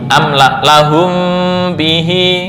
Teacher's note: mim sukun yang bertemu ba bukan tertutup 100% tapi remang-remang